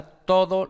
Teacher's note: la D es aproximante